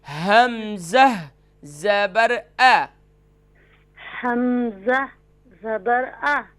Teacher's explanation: وسط حلق نہیں، اقصای حلق سے ادا ہوتا ہے، یعنی کہ سینے کی جانب سے